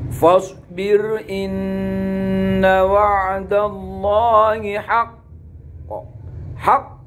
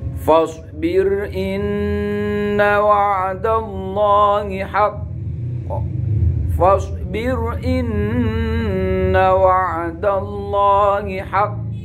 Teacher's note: Tapi kalau qalqalah akbar ini, huruf qalqalah diwaqafkan dikarenakan di situ juga ada tasdidnya, sehingga qalqalahnya ini lebih besar daripada qalqalah kubro